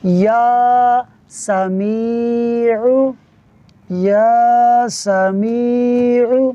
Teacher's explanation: یا اور سمیع اس کے درمیان آواز اور سانس کو توڑنا نہیں ہے